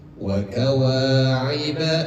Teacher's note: Kalau kita berhenti di ujung sini kita kita berhenti misalkan maka jadi mad iwan harakatnya dua saja enggak perlu dipanjangpanjangkan